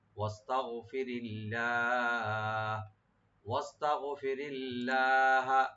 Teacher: খাসিমা ওয়াস্তাগফিরিল্লাহ, ওয়াস্তাগফিরিল্লাহ, তাটাকে open রাখবেন আর গাইনটাকে right দিবেন। রা এখানে খুবই হালকা পাতলা করে পড়া হবে আর লফজ জালাল এখানে লাইট হবে